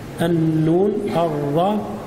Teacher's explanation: مخرج الراء يقارب مخرج النون